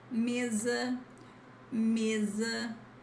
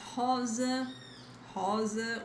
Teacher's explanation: when you have the single S between vowels, and this is important again, between vowels, sometimes we have these different sounds. The sound is like Z, the Z sound, as in zebra